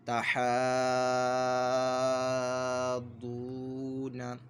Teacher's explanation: واو ساکن سے پہلے پیش 1 الف 2 حرکات کے برابر اس کو کھینچ کر پڑھنا ہے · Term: واو مدہ